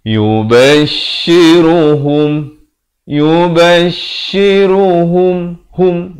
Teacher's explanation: Ha baris dhammah bunyi hu, bukan bunyi ho. Jadi bila bertemu mim jadi hum, jangan baca hum.